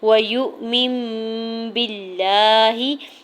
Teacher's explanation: وَيُؤْمِن بِاللَّهِ، واو کی زبر کو بغیر کھینچے ہوئے ادا کرنا ہے، یا کی پیش کو حمزہ ساکن کے ساتھ ملاتے ہوئے جھٹکا دیں گے